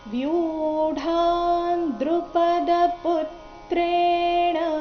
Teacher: ಇಲ್ಲಿ ವ್ಯೂ ದೀರ್ಘ ಆಮೇಲೆ ಡ ಚೆನ್ನಾಗಿ ಕೇಳಿಸಬೇಕು